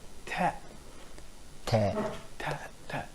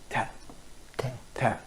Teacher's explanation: the tip of the tongue touches the teeth ridge · alveolar here means that the tip of the tongue always actually touches the alveolar ridge. the upper teeth, probably the backyard of the upper teeth.